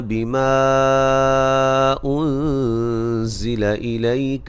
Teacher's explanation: یہاں مد جائز ہے، 3 سے 4 الف کے برابر لمبا کریں گے